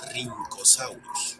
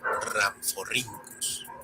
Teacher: recibe una pronunciación con una R marcada, como la doble R del alfabeto escolar de antaño